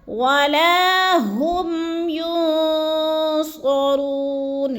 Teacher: منها عدل ولا ہم، ولا کو تھوڑا سا کھینچنا ہے، الف مدہ ہے، ہم پہ غنہ نہیں کرنا، میم ساکن کے بعد یا گیا ہے تو ادھر کیا ہے؟ اظہار شفوی، غنہ نہیں کرنا